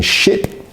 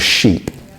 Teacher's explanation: ship has that short I sound sheep has the longer e sound